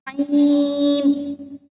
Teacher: इसकी आवाज जो है वो हलक के बीच से आनी चाहिए